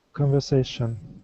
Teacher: this s in the middle is an unvoiced S